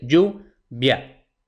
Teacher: la sílaba tónica es la primera, yu, y tenemos una palabra llana terminada en vocal, pues no se acentúa.